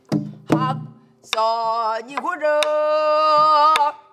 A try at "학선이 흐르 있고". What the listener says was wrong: 길어 길 그렇게 길잖아